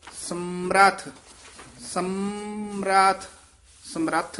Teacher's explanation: ਸਮਰਥ ਨਹੀਂ ਰਾਰਾ ਪੂਰਾ ਨਹੀਂ ਲਾਉਣਾ